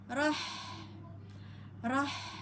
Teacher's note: Ha pada tengah tenggorokan